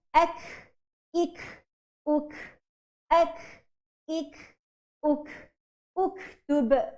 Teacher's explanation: Kaf bila mati dia ada desiran, dipanggil sebagai hamas.